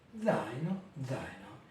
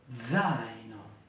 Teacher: les deux voyelles font partie de la même syllabe. L'accent est sur le A. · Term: diphtongues descendants